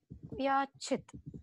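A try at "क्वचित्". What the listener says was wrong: Not vyachit. Kakara plus va. Kvachit. Kakara at the top and va at the bottom.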